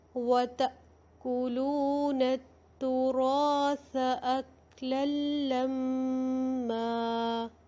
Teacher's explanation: یہاں پہ تنوین کی آواز کو بالکل نہیں پڑھا، سائلنٹ کر دیا ہے اس کو. تو اس کو کہتے ہیں ادغام بلا غنہ.